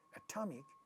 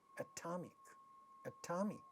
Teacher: ta sound at the syllable initial position of this stressed syllable in the word atomic is getting stressed hear this word again atomic atomic so this